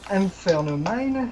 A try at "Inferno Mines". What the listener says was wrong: Inferno Mines. Parce qu'il y a un S.